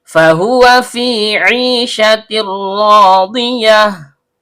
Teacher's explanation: Fahuwa fi 'ishatir radiyah. Fa huruf bibir, yaitu perut bibir bawah bertemu dengan ujung gigi seri atas.